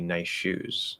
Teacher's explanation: Basically the assimilation would be that the S drops, so it'd be nice shoes.